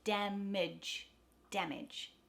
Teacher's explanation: the first syllable in damage da is the stressed short a ah so the second a in that word becomes a schwa